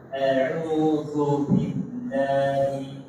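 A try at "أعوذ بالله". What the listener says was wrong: Jangan dihembaskan zu. Du.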